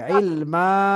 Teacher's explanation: জি, থামতে হবে, এবং এখানে থামার কারণে এক জবর বাদ দিয়ে একালিফ টেনে পড়তে হবে